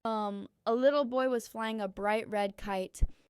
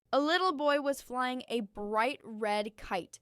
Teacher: Notice how I link bright red into one smooth sound.